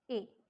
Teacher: front of the tongue is raised, it is almost half close, unrounded